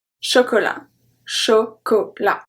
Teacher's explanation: So the T is silent.